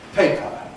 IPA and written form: ˈpeɪpə (paper)